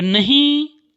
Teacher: जब नहीं बोले तो नहीं नाक और मुंह से दोनों से थोड़ा हवा निकल रहा है और उच्चारण का सहायता हो रहा है, नहीं। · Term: अनुनासिक